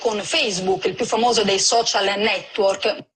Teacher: one core feature of this accent is the insertion of word final vowels after consonants